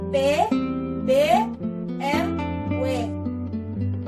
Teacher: Bunyi bilabial, yaitu bunyi yang dihasilkan oleh keterlibatan bibir bawah dan bibir atas. Bibir bawah sebagai artikulator menyentuh bibir atas sebagai titik artikulasi.